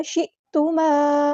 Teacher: حمزہ کو یہاں پر واضح ادا کرنا ہے، جھٹکا آنا چاہیے۔